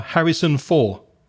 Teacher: she forgets that final consonant sound, the duh at the end